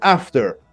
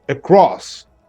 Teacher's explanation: First syllable stressed, for example, after. Second syllable stressed, across